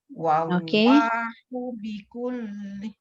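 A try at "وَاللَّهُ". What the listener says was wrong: Cumanya dia punya cara menyebut tu dia jangan buka wallah. Dia jangan buka wallah. Dia kena tinggi kali dah.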